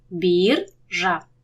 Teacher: поряд сонорний ри і дзвінкий ж їх треба розділити